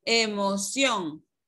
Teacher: Se divide en tres sílabas y la última sílaba es la que va a llevar la mayor fuerza de voz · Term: sílaba tónica